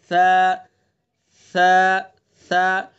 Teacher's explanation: सा को अदा करते वक्त जबान की नोक को सना उलिया के किनारे पर लगाएंगे